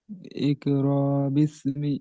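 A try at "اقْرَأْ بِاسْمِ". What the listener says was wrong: র টান হচ্ছে কেন? আমি ঝাটকা মতন করতে বলতে আপনি টান দিচ্ছেন। ইকরা বিস্মি র, একটু ঝাটকা মতন হয় না? হ্যাঁ, প্রতিবার এরকম ঝাটকা মতন দিতে হবে।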